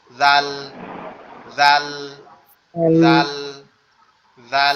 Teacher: এই জালটা উচ্চারণ হবে আবার আমাদের জিহ্বার আগা সামনের দুই দাঁতের আগার সঙ্গে, অর্থাৎ সা সা অক্ষরটা যেখান থেকে উচ্চারণ হয়েছে, এই জালটা ওইখান থেকে উচ্চারণ হবে।